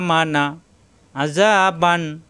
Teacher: এই নুন সাকিন এবং তানবিনকে গুন্না ছাড়া স্পষ্ট পড়তে হবে। কোন গুণ হবে না। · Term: ইজহার